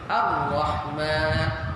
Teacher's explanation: Ra ketika bersabdu tiada getaran.